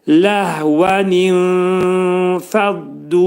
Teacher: Ləh baş şəkildə deyil, hənin məxrəcini bildiririk boğazın aşağısında